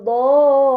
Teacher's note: Ini dinamakan mad lazim kilmi. Karena mad bertemu dengan sukun atau tasydid dalam satu kata, maka harus dibaca panjang selama 6 harokat.